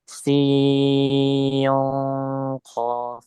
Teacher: Sin ketemu qaf huruf tebal, jadi kita harus persiapan menebalkan huruf qaf ketika dengungnya. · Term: ikhfa